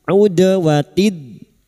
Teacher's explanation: Ud dalam sukun yang mati asli di tengah kalimat qalqalah sugra. Jangan lupa dipantulkan.